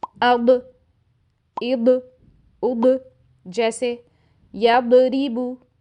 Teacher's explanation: دوسری غلطی تب ہوتی ہے جب ضاد ساکن ہوتا ہے اور ہم اس پر قلقلہ کر دیتے ہیں